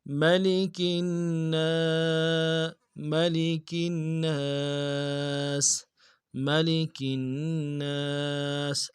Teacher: اور اس کے بعد نون کے اوپر تشدید ہے، زور دینا ہے، نون کے بعد الف مدہ اس کو بھی ایک الف کی مقدار میں کھینچ کے پڑھنا ہے